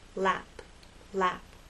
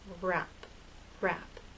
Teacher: relax a little and have a gentle rounding lap lap but with r your lips are more rounded and a little more tense